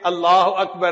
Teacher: پھر یہ بھی سن لیجئے کہ لفظ اللہ سے پہلے اگر کوئی لفظ ہے اور وہ مفتوح ہے یا مضموم ہے تو اللہ کا جو لام ہوتا ہے نا اس کو پر پڑھتے ہیں، اس کو تفخیم کہتے ہیں